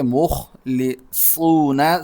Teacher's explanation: صاد سیٹی کے ساتھ اور موٹا بھی. اور سیکنڈ لاسٹ نمبر پر واو ہے تو سٹاپ کرنے کی صورت میں، ٹھہرنے کی صورت میں ہم اس پر مد کریں گے مخلصون وَنَحْنُ لَهُ مُخْلِصُونَ. · میم کو خا سے ملائیں گے، خا موٹا پڑھیں گے، مخلصون صاد سیٹی کے ساتھ اور موٹا بھی.